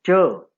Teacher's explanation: When we pronounce the sound ch, tip of the tongue makes contact with alveolar ridge